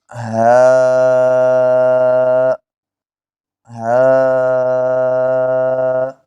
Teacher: اقصی حلق جو سینے کی طرف نیچے والا حصہ ہے گلے کا، اس سے یہ ہا ادا ہوتا ہے۔